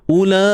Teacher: La panjang 4 ataupun 5 harakat, disebabkan nampak ni ada simbol mad, selepasnya ada huruf hamzah dalam satu kalimah. Mad wajib muttasil.